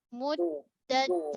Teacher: Dad ni gunakan pipi lidah. Tebal terkepung.